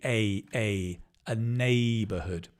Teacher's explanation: You can see the stress is on the nay.